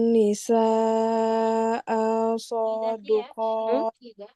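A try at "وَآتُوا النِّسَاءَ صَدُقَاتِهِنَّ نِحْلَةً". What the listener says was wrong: Masih panjang. Hamzahnya juga sama, nggak boleh panjang. Wa'atun nisa'a soduqatihin nanih lah.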